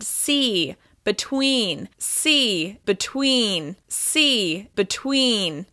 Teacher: my mouth is moving once again to the y shape at the end of that vowel sound